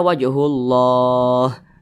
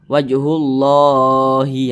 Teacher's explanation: Nah, matikan huruf H-nya. Tidak dibaca Wajhullahi ya, tidak dibaca seperti itu, tapi huruf H disukunkan. Maka nama madnya itu berubah menjadi mad arid li sukun.